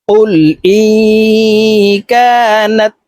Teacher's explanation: নুন সাকিনের পরে ইকফার 15 টি হরফের ভিতরে একটি হরফ কাফ আসছে এই কারণে এই নুনকে নাকের ভিতরে লুকাইয়া গুন্নার সহিত পড়বো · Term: ইকফা গুন্না